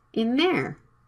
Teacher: the th sound is right after the n Sound it can be dropped